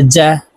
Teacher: জিম হরফ জিহ্বার মধ্যখান থেকে উচ্চারণ করব, কারণ জিমের মাখরাজ জিহ্বার মধ্যখান থেকে হবে।